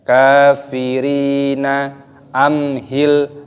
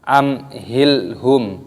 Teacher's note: mim sukun bertemu dengan huruf ha, yaitu dibaca idhar syafawi. Jadi cara membacanya tidak boleh kita mendengungkan, harus dibaca jelas.